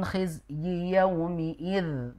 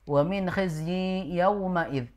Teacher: Yang benar wa min khizyi pendek i-nya, kemudian dia bukan yauma, tapi yaumi. Ya, wa min khizyi yaumi'id begitu.